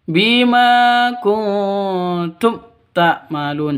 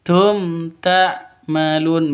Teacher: Mim mati bertemu dengan ta. Jelas terang. Karena bacaan izhar tidak boleh di dengungkan, tidak boleh disen sentak.